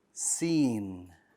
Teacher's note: The letter Sheen is light, so the back of your tongue stays flat. It also has air.